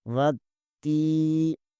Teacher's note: یہاں واو زبر کے آگے الف آ رہا ہے، اس کو ساکن کر دیں گے۔ تا کے اوپر شد بھی ہے، اس لیے تا کو تھوڑا سا دبائیں گے